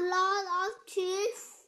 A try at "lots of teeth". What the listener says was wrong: There's S. Pronounce S.